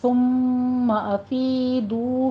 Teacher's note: ثم افیدو میں یا مدہ اور واو مدہ ہے، 2 کاؤنٹ کرنے ہیں